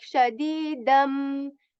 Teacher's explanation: You can hear it like shadidam, the dal sound joined with the m sound